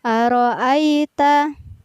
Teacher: tidak boleh dibaca panjang ya karena dia berada di tengah ayat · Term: Ya Sukun